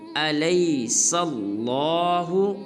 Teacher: سین کو لام مشدد کے ساتھ ملائیں گے اور لام کو پر ادا کریں گے